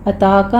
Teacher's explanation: اتاکا میں تا کے پر فتحہ قائمہ ہے، 2 کاؤنٹ کرنا ہے